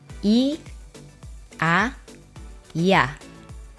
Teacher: It is a semi-vowel E. So it is like pronouncing E and A together very quickly. But you should make E shorter for this case because it is a semi-vowel.